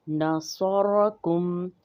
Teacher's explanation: نون جو ہے وہ باریک پڑھیں گے، صاد موٹا ہو جائے گا، را بھی موٹا پڑھا جائے گا۔ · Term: تخفیم